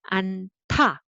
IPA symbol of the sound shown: 안타